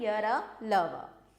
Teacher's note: जीभ मुंह के भागों से बहुत ही हल्का सा स्पर्श करती है। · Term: अंतस्थ व्यंजन